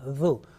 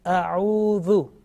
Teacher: zal, soft and thin, not mingling, not mixing with the sound with the buzzing sound like za